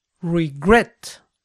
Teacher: La acentuación cae en la última sílaba.